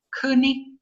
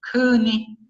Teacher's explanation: Uno con tono alto y el otro con tono ascendente